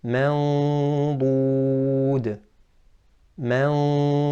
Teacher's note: The tongue is cupped because it's a harf of isti'la. The epiglottis is moving backwards, so you're ready for the dad, and therefore the sound of the ghunna comes out as if it is thick or it has tafkhim, the ghunna. · So you hear the ghunna here, mandud. Your mouth is ready for the makhraj of dad. You're at that makhraj, very close. The tongue is cupped because it's a harf of isti'la.